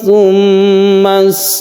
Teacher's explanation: mim mati bertemu dengan mim kita sebut dengan Idgham Mimi kita panjangkan kita dengungkan